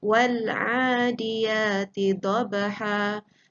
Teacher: Apabila kita baca sambung, alif ini digugurkan, wa dimasukkan bunyinya terus ke dalam lam yang mati. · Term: tanda kepala sad